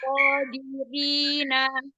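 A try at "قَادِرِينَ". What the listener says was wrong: Iya, nunnya jelaskan lagi. Qadirina. Jadi nun itu ujung lidah ketemu dengan gusi atas. Nyandarnya di gusi atas. Nah, jadi tadi kayak sebelum nyandar. kapal kalau belum nyandar itu mesti ngambang.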